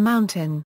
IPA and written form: ˈmaʊntən (mountain)